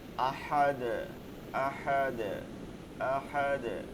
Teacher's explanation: আর ডালে যখন জজম দিব, কফ ক বাজিম দাল, এই পাঁচ হরফের উপরে জজম হইলে কলকলা হবে। কলকলা করিয়া পড়িতে হয়, একটু ধাক্কা দিয়ে পড়তে হবে